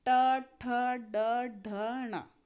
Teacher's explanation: तो ट ठ ड ढ ण आप बोल के देखिए, नाक के ठीक नीचे जो मुख की ऊपरी छत है वहाँ पे टकराते हैं और मूर्धन्य कहलाते हैं